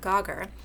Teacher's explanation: It's actually a tap is the official kind of manner of articulation, but we're going to change it and it's in the alveolar position actually, and we're going to basically shove it further back in the mouth to that velar position, make a G. We're going to turn it into a stop like the other G. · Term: assimilation